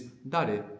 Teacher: the R is between an R and an L